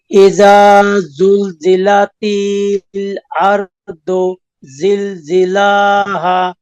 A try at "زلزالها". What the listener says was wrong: এই যে জিলজিলাহা না, জিলজালাহা।